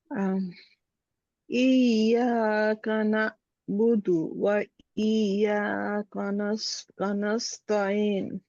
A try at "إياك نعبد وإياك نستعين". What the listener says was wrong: প্রথম ইয়ার এটা সুকুনটা হয় নাই, এটা গলাটা আপনার হামজার মতো হয়ে যাচ্ছে। হ্যাঁ, আবার শোনেন, ইয়াকা না'বুদু, এরকম হবে।